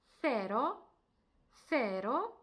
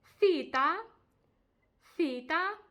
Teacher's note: коли ми власне між нашими зубами трішки вип'ячуємо язик і намагаємось сказати з і в нас виходить сф